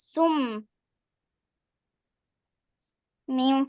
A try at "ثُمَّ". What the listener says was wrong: আরো গুন্না হবে সুম্মা